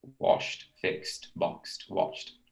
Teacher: So whenever that happens, when it doesn't vibrate at the end, you say washed, you know, in the past with a t sound